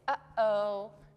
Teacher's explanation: your throat closes up just for a second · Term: little stop in your throat